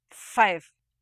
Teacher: The fricative at the beginning and end of the word five is voiceless because the fricative sound is not accompanied by voicing. That is, the voicing starts after the vocal tracts are opened up for the vowel and stops just before the closure made again at the end of the word.